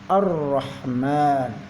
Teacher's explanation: Cara membaca lam ta'rif syamsiyah seperti dalam kalimat ar-rahman, yaitu alif lam seakan kita hilangkan. Jadi kita langsung masuk ke dalam huruf ro.